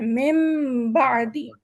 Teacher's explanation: ہم میم پہ وزن بھی دیں گے، تھوڑا اسے ظاہر کر کے پڑھیں گے اور با کو بھی پڑھیں گے. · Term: نون اقلاب